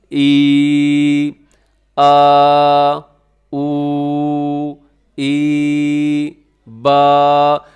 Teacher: اب ان سب کے اندر کیا ہے، آپ کو اچھے طریقے سے اندازہ ہو جائے گا کہ یہ حروف منہ کے خلا سے نکل رہے ہیں، اس میں آپ کی زبان کہیں ٹچ نہیں ہو رہی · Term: جوف دہن